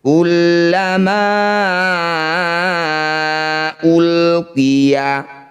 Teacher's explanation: Mad tabi'i bertemu dengan hamzah di lain kata disebut bacaan mad jaiz munfasil. Ma yang bertanda layar panjangkan 5 harokat, 5 ketukan.